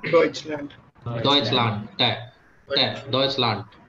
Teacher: Last में ड का साउंड हो, ट होता है। द साउंड विल बी ट, हाँ।